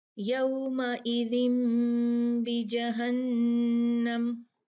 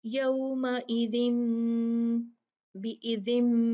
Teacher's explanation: اس میں ہم جو نون ساکن ہے اس کو میم سے بدل دیتے ہیں اگر اس کے بعد تنوین یا نون ساکن کے بعد با آئی ہو. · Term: اقلاب